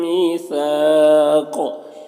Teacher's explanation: सा में अलिफ मद्दा है और यहाँ पर वक्फ़ करेगा तो काफ ये जो है कि हरकत ये सुकून से बदल जाएगा, तो फिर काफ में कलकला होगा और कौफ हुरूफ मुस्तालिया में से, तो कौफ को पुर पढ़ेंगे और यहाँ पर मद्दे आरिज़ वक्फ़ी भी होगा, तो इस तरह से पढ़ेंगे।